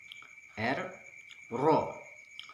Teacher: Ra seperti huruf R dalam bahasa Indonesia, namun ada sedikit getaran. R, Ra. Ujung lidah menempel pada langit-langit depan atas. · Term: huruf Ra